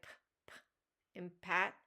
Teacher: bilabial, made with both lips